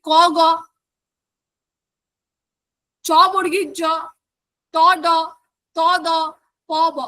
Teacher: অল্পপ্রাণ ধনি বলতে বোঝানো হচ্ছে বর্গের প্রথম তৃতীয় ধ্বনির উচ্চারণের সময় আমাদের প্রাণ বায়ু বা আমাদের শ্বাসবায়ু জোরে বার হয় না বলে এদের অল্পপ্রাণ ধ্বনি বলে